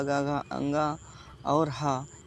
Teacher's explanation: कंठ से आते हैं। ये सब कंठ से बोले जाते हैं।